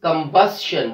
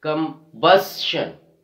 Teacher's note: We are stressing on the second last syllable, combustion.